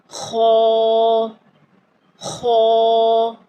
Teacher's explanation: خو کو ادا کرتے وقت تھوڑی گلے میں خراٹے کی سی آواز بھی آنی چاہیے